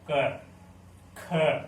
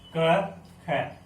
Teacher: हमारे बोलते समय कंपन नहीं उत्पन्न होता, उसको हम अघोष बोलते हैं · जैसे आप बोल के फील कर सकते हैं क ख, इसको आप बोलेंगे आपको कोई कंपन टाइप महसूस नहीं होगा